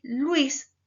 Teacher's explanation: Luis, la I, cumple la función de núcleo silábico por tener mayor fuerza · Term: diptongos homogéneos